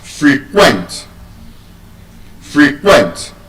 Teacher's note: But as a verb, many can't even use that word as a verb. As a verb, the word will be stressed on the second syllable.